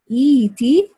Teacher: the reader is supposed to change this Hamza into a ya mad, and that will be pronounced as et, because it's hard to pronounce two Hamza after each other and so on.